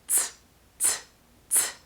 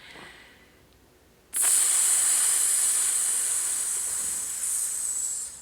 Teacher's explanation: I felt the air come out, and instead of a burst of air, I just slowly released that air.